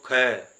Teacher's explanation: ख तो उसमें क से ज्यादा हवा हमारे मुख से बाहर निकलेगी तो इसमें हवा ज्यादा बाहर निकलती है इसमें कम इसमें ज्यादा इसी इसी प्रकार देखो ये बिल्कुल व्यवस्थित ढंग से रखे गए हैं।